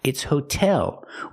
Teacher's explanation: We keep that T sound because the stress is on the second syllable.